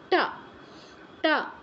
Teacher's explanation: ট বর্গের অক্ষরগুলো উচ্চারণ করতে আমাদের জিউভা মূর্ধায় স্পর্শ করে · আপনি ট উচ্চারণ করে দেখুন, জিহ্বাটা ঠিক যেখানে স্পর্শ করছে তাকে হচ্ছে আমাদের মূর্ধা বলা হয়। ট ট। তো ট বর্গের প্রত্যেকটা বর্ণ উচ্চারণের সময় জিহ্বা আমাদের মূর্ধাকে স্পর্শ করবে।